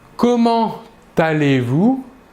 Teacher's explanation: pour cette expression comment allez-vous nous réaliserons la liaison entre comment et allez